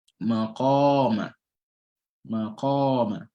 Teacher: All right, so the qaf is being elongated by an alif mad.